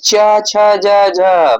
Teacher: च वर्ग का तालु से उच्चारण होता है।